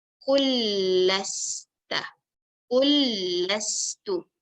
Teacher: Sama juga yang awal tadi kita belajar, nun mim mati bertemu dengan mim hidup. Jadi maka huruf yang pertama dihilangkan terus masuk pada huruf yang kedua.